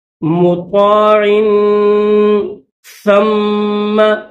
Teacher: یہ ثا ہے تو زبان کو تھوڑا سا باہر نکالیں گے